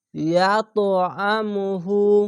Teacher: কলকলা উপর দিকে সাউন্ড যাবে